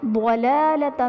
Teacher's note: ضلالۃ میں ضاد حروف مستعلیہ میں سے ہے اسی لیے اسے پر یعنی موٹا پڑھا جائے گا